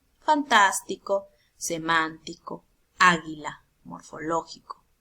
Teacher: ahora tenemos las palabras esdrújulas o probar occitanas estas dicen que recae en la mayor fuerza de voz en la ante penúltima sílaba